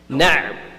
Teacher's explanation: The middle portion of the throat is where ayn comes from.